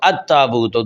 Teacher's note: اب اس میں پہلا حرف ہے تا، تو اب اس میں دیکھیے کہ پہلا کلمہ ہے التابوت۔ اب لام تعریف کے بعد تا آیا تو لام تا میں داخل ہو گیا، لام تعریف نہیں ادا ہوا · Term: لام تعریف کا ادغام